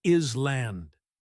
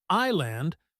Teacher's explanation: it's simply island with the S completely silent